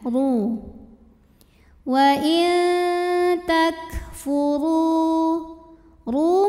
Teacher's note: huruf ro dibunyikan secara tafkhim karena ro berbaris di atas yaitu baris damah cara bacanya ditebalkan pangkal lidah dinaikkan duu Wain takfuru ru Mad Thobi'i doohiri karena ada wau sukun